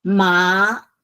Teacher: It's from low up, and it's a second tone up. Good. So you can hear ma is up.